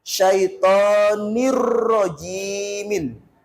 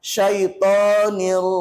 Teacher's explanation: Nah, kalau tadi idgham bi ghunna, masuk dan mendengung, idgham bila ghunna membacanya masuk tanpa mendengung, tanpa berlama-lama di situ, langsung melebur ke huruf depannya, nggak boleh mendengung